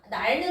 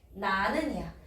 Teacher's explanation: 어간 날 뒤에 어미 는이 와서 리을이 탈락. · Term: 리을 탈락